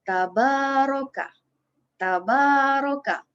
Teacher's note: Ba dibaca 2 harakat kerana di situ terdapat huruf mad asli.